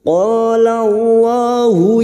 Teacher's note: sampai memantul qo fathah diikuti Alif dua harakat kita panjangkan qolallahu lam jalalah yang didahului fathah kita baca tafkim